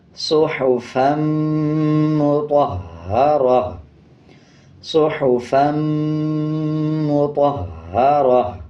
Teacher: جب وقف کریں گے تا کو ہا میں تبدیل کر دیں گے اور وقف کرتے ہوئے ہا کی آواز کو آدھا پڑھیں گے اور 2 زبر کو سائلنٹ کر دیں گے۔